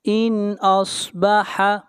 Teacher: ان یہاں پر بھی اظہار ہوگا اس لیے کہ نون ساکن کے بعد اگلا حرف جو ہے حمزہ ہے اور حمزہ حروف حلقی میں سے ہے۔